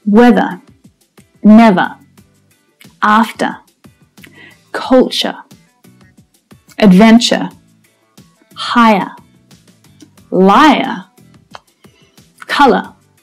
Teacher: In Australian English pronunciation, usually the ER at the end of a word will be unstressed. The sound is not pronounced at the end. So in my accent, These words all end in a schwa sound. · They all make the same schwa sound at the end of the word.